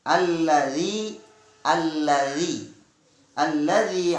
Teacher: kalian harus mengucapkan dzal tipis yang keluarnya diujung lidah ya dengan ujung dua buah gigi yang atas